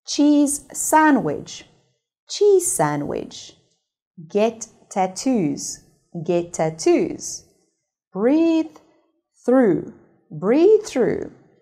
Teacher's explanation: we should remove one syllable and pronounce a single sound for both of the words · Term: linking